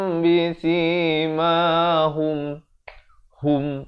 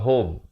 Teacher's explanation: ha baris dhammah bunyi hu, bukan bunyi ho.